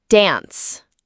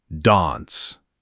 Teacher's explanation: Americans say dance with that flat a sound. >> Brits say dance with that longer a sound >> like ant.